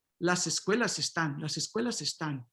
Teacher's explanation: in Spanish, you resyllabify the S and las escuelas están, right? It's still S